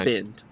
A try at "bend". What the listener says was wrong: You're saying it weird. You're saying it without the D, so it sounds like you're saying bun.